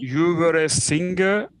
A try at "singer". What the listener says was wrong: The G sound. Okay, try to remove that. So don't say singer, but say singer. Singer.